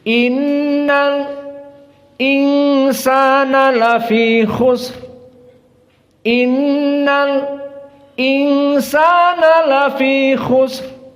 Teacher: Maka dibaca alnya dan berhenti sebentar. Karena mau masuk lam sakinah kepada hamzah itu susah bagi mereka. Maka mereka mewakafkan dalam takdir 2 harokat. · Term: as-sakt